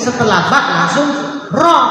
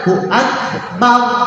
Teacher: Setelah ba langsung ro, ro-nya tafkhim tebal.